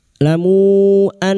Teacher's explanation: nun yang bertasdid gunna musyaddadah kita dengung selama 3 harakat